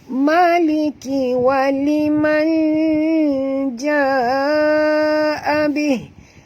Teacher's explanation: nun mati bertemu jim. Kita kena sorokkan bunyi nun ke dalam jim disertai dengan dengung. Ikhfa hakiki.